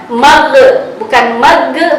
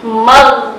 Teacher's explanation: ketika huruf ghain itu sukun maka tidak boleh mantul, bukan mag tapi mag, jadi dilangsungkan.